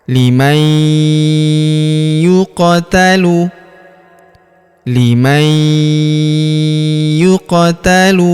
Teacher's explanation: Huruf qof berharakat sukun kita pantulkan atau kita qolqlahkan.